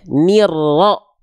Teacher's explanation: Ni langsung dari ni langsung masuk ke ro, ditekan ro-nya.